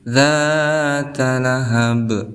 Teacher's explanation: Di sini juga ada huruf qalqalah yaitu ba di akhir kalimat ataupun diwaqafkan.